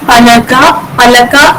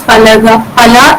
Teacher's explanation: That, for example, palaka in standard Malayalam becomes pala in Kadathanadan dialect. The syllable ka gets deleted